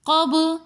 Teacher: قاف کے بعد با حروف قلقلہ میں سے ساکن حالت میں آ رہا ہے قب، اسی لیے ہم نے با کے اوپر قلقلہ کیا. قلقلہ کہتے ہیں کہ جس حروف قلقلہ قاف طا با جیم دال، ان حروف میں سے یہ جب بھی ساکن حالت میں آئیں گے تو ان کی آواز پلٹ کر واپس آئے گی.